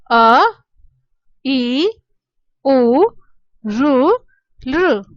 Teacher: जो ह्रस्व स्वर हैं इनके उच्चारण में एक मात्रा का समय लगता है, अर्थात बहुत कम समय लगता है।